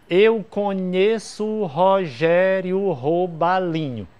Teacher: a sílaba tônica de Rogério é a segunda e eu preciso que seja terceira eu tenho que colocar então